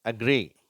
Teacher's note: மென்மையான அ. தமிழில் நம்ம அ அப்படின்னு சொல்லி உச்சரிக்கிறோம். அதை விட ரொம்ப குறைவான நேரம் லேசாக உச்சரிக்கிறோம். அது அ அப்படிங்கிற ஒரு ஓசை.